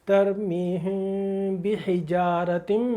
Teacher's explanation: बंद कर देंगे एकदम, पहले खोले थे इख्फा शफवी के लिए, अब एकदम बंद कर देंगे पूरे होठ, और वहाँ से उसकी आवाज़ को नाक में ले जाएंगे, गुनगुनाएंगे